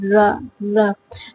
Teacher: But here, post-alveolar means the tongue is touching just behind the part of alveolar ridge